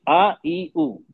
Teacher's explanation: अलिफ या और वाव ये तीन आवाज हम लंबी करते हैं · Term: मद लेटर्स